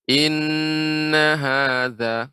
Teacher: pada kata nun yang bertasydid ini agak lebih lama, kita beri nama gunanya